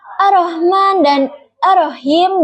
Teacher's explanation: Huruf H kecil yang makhrajnya itu di tenggorokan tengah getaran lebih lemah dari H besar.